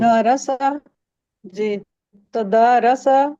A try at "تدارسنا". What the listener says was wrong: اچھا تادا نہیں کرنا، تدا الف پڑھنا ہے، الف کو لمبا کرنا ہے. تدارسنا. تدارسنا. جی تو تدا الف کو لمبا کریں گے چونکہ الف آ رہا ہے.